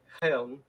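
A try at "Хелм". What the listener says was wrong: Yeah, KH is H. Just drop the K and it's a hard H. Yeah.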